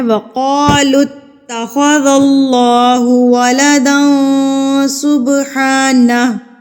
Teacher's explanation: تا کے اوپر تشدید ہے تو آپ نے اس کو مضبوطی سے پڑھنا ہے